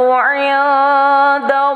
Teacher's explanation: Nun mati bertemu dengan dal hukumnya ikhfa berdengung 2 harakah.